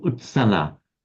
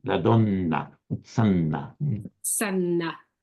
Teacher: carefully holding the double N, as if it were Italian